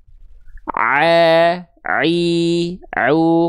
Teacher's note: huruf ain itu dilafkan dari bagian tengah tenggorokan